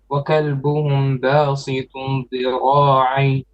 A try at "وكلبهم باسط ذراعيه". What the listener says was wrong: Yes, but you forgot وكلبهم ميم با two beats.